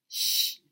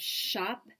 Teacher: we move on to the roof of the mouth with a fricative voiceless sound